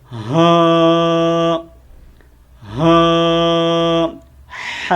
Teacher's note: یہ سینے سے ادا ہونے والی ہا ہے